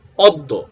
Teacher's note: অ ধ্বনির পরে যদি জ ফলা হয় তাহলে অ ধ্বনিটি সংবৃত বা ওর মত উচ্চারণ হয়